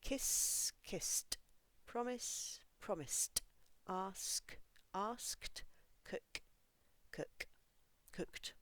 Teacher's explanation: words that end with an unvoiced sound no extra syllable the ending sounds like T